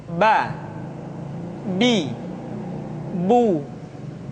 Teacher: Yang kedua, huruf Ba. Huruf Ba dikeluarkan dengan cara merapatkan kedua bibir kita.